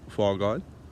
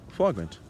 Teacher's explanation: a handful of really common words ending in oil that in Munster Irish actually end in int.